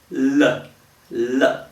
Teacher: you have the liquid spilling from the sides of your tongue because your tongue is curled up so there's nothing can that can be SP from the front